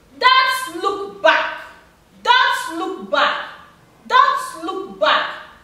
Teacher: The three syllables are stressed.